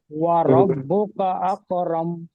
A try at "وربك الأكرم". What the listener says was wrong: ভুলে যাচ্ছেন কেন ওয়ারাব্বুকাল কাফ লাম জবর কাল আছে দেখেন আমি একটু বানান করে দিচ্ছি আপনারা খেয়াল করেন ওয়াও জবর ওয়া র বা জবর রব ওয়ারাব বা পেশ বু ওয়ারাব্বু কাফ লাম জবর কাল ওয়ারাব্বুকাল হামজা কাফ জবর আক ওয়ারাব্বুকাল আকরাম মিম জবর রব ওয়ারাব্বুকাল আকরাম